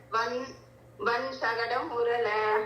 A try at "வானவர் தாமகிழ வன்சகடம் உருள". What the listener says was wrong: நடுவில் வேண்டாம். வானவர் தாமகிழ வன்சகடம் அது ரெண்டா பிடிக்க வேண்டாம். வானவர் தாமகிழ வன்சகடம் உருள சரி சார் அங்கதான்